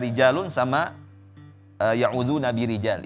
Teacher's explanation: Ra-nya di sana tipiskan, rijalun sama birija itu juga ditipiskan. Kana rijalun sama ya'udzuna birijal itu juga ra-nya ditipiskan ya.